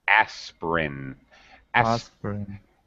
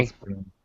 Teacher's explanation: Most people drop the middle syllable, this middle I.